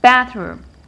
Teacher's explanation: We stress the first part because it's a noun.